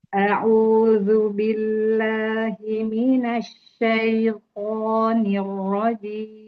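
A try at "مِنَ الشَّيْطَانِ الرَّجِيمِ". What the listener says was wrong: Syinya kan bertasydid ya. Jadi kurang sedikit mengalir suaranya. Minasya. Tahan dulu. Minasya.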